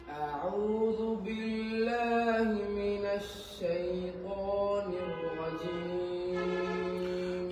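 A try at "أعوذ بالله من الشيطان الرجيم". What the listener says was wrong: নিররাজিম, নিররাজিম না, দ্রুত না, ধীরে। নিররাজিম।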